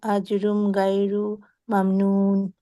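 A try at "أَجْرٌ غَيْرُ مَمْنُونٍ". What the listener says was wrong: তাড়াহুড়ো করতে গিয়ে এখানে একটা গয়রুনের এটা পড়লা না তুমি। আজরুন গয়রু।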